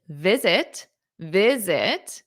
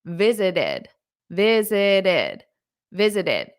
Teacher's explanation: you add that extra syllable that's because the word visit ends in a t if the word ends in a t or a d